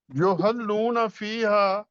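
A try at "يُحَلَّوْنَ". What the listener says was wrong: نہیں، لام کے اوپر زبر ہے سر.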